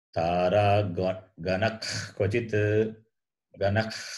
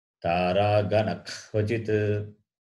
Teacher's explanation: The sound comes from the root of the tongue. The root of the tongue. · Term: visarga